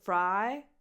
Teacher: so you have a diphthong, I as I in the alphabet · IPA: aɪ